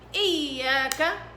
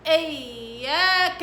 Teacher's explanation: الياء هنا عليها شدة، والياء في كل القرآن اللي عليها شدة فيها نبر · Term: نبر صوتي